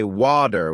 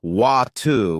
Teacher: Now, you switch to a British show, and you hear water again, but it sounds different. In American English, people might say water with a D sound, while in British English, it's often water with a T sound.